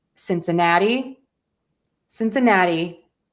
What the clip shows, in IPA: ˌsɪnsɪˈnæti ˈbɛŋɡəlz